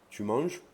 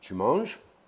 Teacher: C'est-à-dire, par exemple, en français, je peux dire tu manges, c'est une affirmation. Mais si je dis tu manges, ça devient une question, parce que j'ai changé le ton.